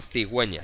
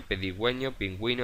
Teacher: significa que tenemos que pronunciar la u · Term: diéresis